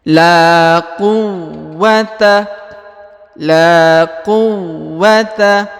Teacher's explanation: dibaca ditekan ya lalu ditahan dua harakat karena ada tanda tasdid